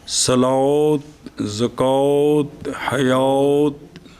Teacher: مثلاً الف صلاۃ زکوٰۃ حیات ہے نا، اس کو الف نہیں پڑھنا، الف کو واو کی طرف جھکا کے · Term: امالہ بجانب واو